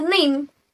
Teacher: bunyi n pada kata name itu merupakan voice alveolar nasal karena lidah menyentuh alveolar ridge